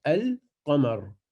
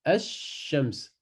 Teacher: Donc là, dans le mot Al-Qamar, le lam se prononce. Et dans Ash-Shams, on passe directement dans la lettre après qui prend une shedda.